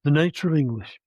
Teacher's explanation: Nay is the first prominent syllable. It doesn't have a tone. The nature of English, ing, is the tonic prominence.